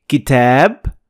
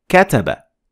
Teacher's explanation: we notice that there is a difference between kitab, long A, to kataba, short A, the short vowel.